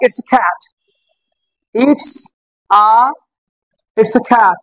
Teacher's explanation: ক এর উচ্চারণ আসলেই আমাকে খ করে উচ্চারণ করতে হবে